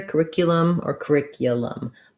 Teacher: the ick is stressed so the ooh is going to get reduced to more of a schwa sound